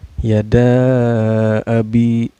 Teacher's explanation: Dan cara bacanya mad jaid mungfasil ini dipanjangkan 4 harakat dan 5 harakat ya.